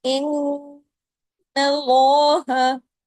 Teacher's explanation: نون پر جب کبھی تشدید ہوگی بڑا غنہ ہوگا، اکمل غنہ ہوگا، اس کے بغیر آواز پیدا نہیں ہوتی نا، آواز ناک سے گزرتی ہے.